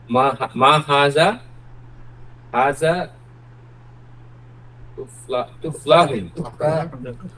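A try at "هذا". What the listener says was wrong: জি, মাহাদা, এখানে কিন্তু জাল উচ্চারণ, হাজা না, হাজা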